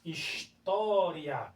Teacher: História, porque eu tenho aqui um ditongo, né? Ó, tenho uma semivogal mais uma vogal. Então eu tenho um ditongo.